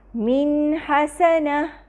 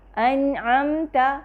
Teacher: نون کی متوسط آواز بھی واضح ہو اور ہم اس کو اضافی غنہ نہ دے رہے ہوں، بلکہ جو اس کے اندر جو موجود غنہ ہے وہ مکمل طور پہ ادا ہو رہا ہو۔ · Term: نون مظہرہ